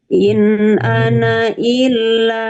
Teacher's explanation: ini menunjukkan bahwa ketika dibaca panjang, ketika apa namanya, tidak boleh dibaca panjang ketika wakof ataupun wasol. Jadi mau itu kita berhenti di ana ataupun kita lanjut, tetap dibaca pendek.